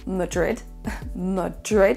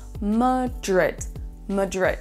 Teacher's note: c'est la deuxième syllabe qui est accentuée plus que l'autre.